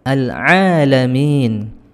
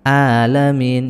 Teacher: Al-alamin, ya, ini satu makhraj sebenarnya, ha dengan ain, ya, menggunakan wasatul halqi, tenggorokan bagian tengah, ya, bukan menggunakan tenggorokan bagian aqsal halqi atau pangkal tenggorokan, sehingga bunyinya seperti hamzah alamin, ya, kurang ke tengah seperti ini.